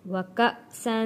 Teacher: حمزہ کو جھٹکا دے کے پڑھیں گے کیونکہ جزم ہے حمزہ کے اوپر۔ کسی بھی الف کے اوپر جب کوئی حرکت آ جاتی ہے وہ الف نہیں رہتا، اسے حمزہ پڑھا جاتا ہے۔